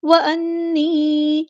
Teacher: نون پہ غنہ زمانی ہو رہا ہے، شد آئی تو غنہ زمانی ہو رہا ہے ، ایک الف کے برابر رکیں گے، یا مد آ گیا